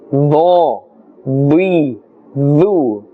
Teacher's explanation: The sound has a thick tone, full sound, full mouth, because it's part of the huruf musta'aliyah.